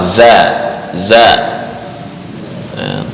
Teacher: za ujung lidah dengan gigi bawah